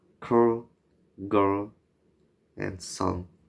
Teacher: velars, formed by putting the back part of the tongue against the soft palate